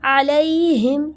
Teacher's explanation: علیہم، یہاں پہ دیکھیں یا ساکن سے پہلے زبر آ گیا، یعنی یہ بن گیا یا لین، اس کو ہم نرمی سے ادا کریں گے